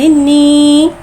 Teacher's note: या साकिन से पहले ज़ेर आ रहा है, या मद्दा हो रहा है, लिहाजा या मद्दा को एक अलिफ यानी 2 हरकत के बराबर खींच के पढ़ेंगे।